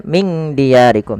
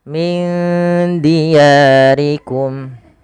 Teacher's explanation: disamarkan nunnya kepada huruf dalnya. Maka huruf dal itu makhrajnya dari ujung lidah kita yang bertemu dengan ee perbatasan antara gigi atas dan gusinya.